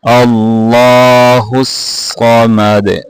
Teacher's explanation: صاد کو بھی موٹا کرنا ہے, دال کے اوپر کلکلا کرنا ہے.